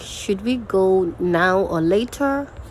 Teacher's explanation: you're Rising when you're making choices like that